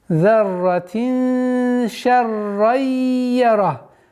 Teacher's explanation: Здесь у нас идгам, как в предыдущем аяте. В размере двух огласовок удерживаем, назализация, частичная назализация. И ра твердая, ха дамма аннулируется, сукун переходит и удерживаем.